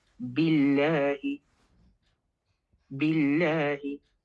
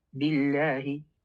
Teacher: if it is preceded by a letter with a kasra, then the lam will be pronounced with an empty mouth or a light lam